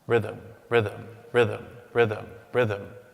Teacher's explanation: In prosody, which is a study of rhythm in language and literature, the word is what we call a trochee, stressed, unstressed